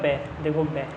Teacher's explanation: तो उसने घोष भी पूछा है तो पहली लाइन में दूसरी लाइन में नहीं मुझे तीसरी लाइन में मिलेगा ब देखो ब ठीक है तो ये घोष भी है अल्पप्राण भी है और ओष्ठ भी है